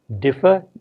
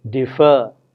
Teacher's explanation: differ, is stressed on the first syllable, defer is stressed on the second syllable